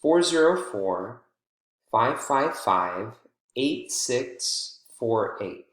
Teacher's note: it's not as long of a pause but there is a brief pause there between the six and the four